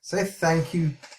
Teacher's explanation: we use the tip of the tongue to touch the tip of the upper incisors meaning the area in which you bite something from · You're touching the tip of the tongue to the tip of the incisors